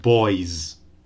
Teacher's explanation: So boy ends in a voiced sound, right? The diphthong is voiced. So the final S in boys will sound voiced.